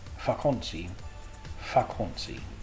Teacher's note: The V in Dutch is pronounced like the English F, and some dialects will pronounce kind of an F and a V together, and some dialects will actually pronounce a V, depending on where you live in the Netherlands. Normally, though, we will pronounce a V like an F